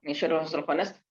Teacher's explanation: huruf kha itu isti'la, jadi harus tebal kha